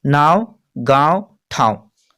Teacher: ऐसा उच्चारण जो नाक और मुंह से होता है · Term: अनुनासिक